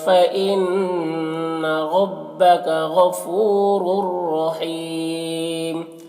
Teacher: فإن میں نون مشدد غنہ کے ساتھ میں پڑھیں گے۔ اور ربک میں را کو پر پڑھیں گے